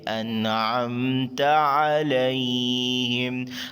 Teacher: آگے انعمت میں نون ساکن کے بعد حروف الکی میں سے عین ہے, یہاں پر اظہار کریں گے, نون کی آواز کو ظاہر کریں گے. انعمت علیہم, عین حلق درمیانی حصے سے ادا ہوگا.